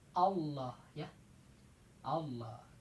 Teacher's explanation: Tebal. Kalau tebal lamnya ke arah o. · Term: tafkhim